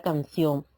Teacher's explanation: Debemos entender que es un diptongo El ejemplo la palabra canción la sílaba tónica cae en la o en vez de la i por lo tanto es un diptongo